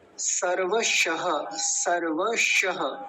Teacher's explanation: पहले दंतीय सकार आ रहा है, फिर तालव्य शकार है। तो दोनों का उच्चारण अलग अलग स्पष्ट होना चाहिए।